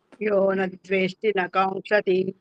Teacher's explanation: వేష్టి అని దీర్ఘం కూడా తీయకూడదండి, ఎందుకంటే అది హ్రస్వం అండి. హ్రస్వం పక్కన మనకి వెంటనే అక్షరం పలకపోతే అది దీర్ఘం కింద వచ్చేది.